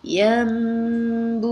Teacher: Dengung maksudnya kita menahan suara kita dengan kadar 2 harakat. Sepatutnya ya nun bunyinya yan, tapi sebab dia bertemu dengan ba, kita tukarkan bunyi nun tadi kepada bunyi mim. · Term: iqlab